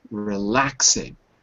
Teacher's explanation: Relaxing. 3 syllables. Relaxing. The stress is on the second syllable.